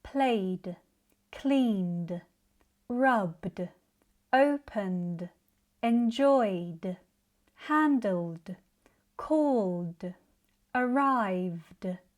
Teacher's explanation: These include all vowel sounds and voiced consonants such as b g v n n l and many others. Because your vocal chords are already vibrating, the ending stays voiced as D. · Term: D endings